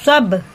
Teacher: با میں قلقلہ، دونوں ہونٹ مل کے ہٹیں گے، اس کا مخرج ادا ہوگا